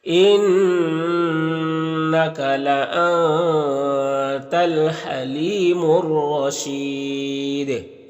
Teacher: رائے مشددہ کے اوپر زبر ہے تو را کو پر پڑھیں گے، اور یہاں پر وقف کریں گے تو مد عارض وقفی ہوگا، اور دال میں قلقلہ ہوگا، تو اس طرح سے پڑھیں گے۔